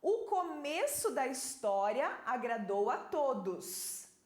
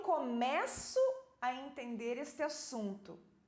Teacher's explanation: Começo tem som fechado. É um substantivo, né? O começo.